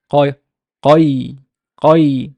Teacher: قاف, remember there قاف causes the fatha to be velarized.